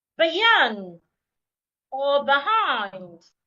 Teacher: In the word market, I also need to say the first part louder, longer, and clearer. But in the word beyond or behind, it is a second part that I need to say louder, longer and clearer.